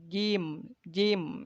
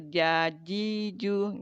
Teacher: Dari tengah lidah dan menempati langit-langit bagian atas. Ya, jadi langit-langit mulut kita bagian atas.